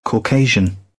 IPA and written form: kɔːˈkeɪ.ʒ (Caucasian)